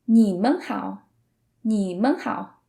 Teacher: That's because it's the neutral tone, so we kind of say it without any emphasis on it